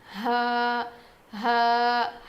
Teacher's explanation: حلق کے نیچے والے حصے سے ادا ہوتا ہے